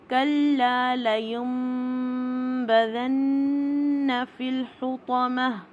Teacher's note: یہاں پہ ہم نون کی آواز کو میم کی آواز میں تبدیل کر کے اس کو اخفا اور ادغام کی درمیانی کیفیت کے ساتھ ادا کرتے ہیں، تو یہ اقلاب کا رول بن جاتا ہے۔ · نون مشدد پہ 2 کاؤنٹ کا غنہ ہوئے گا